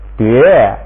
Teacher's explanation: 声母还是的，韵母变成了约，而且要发3声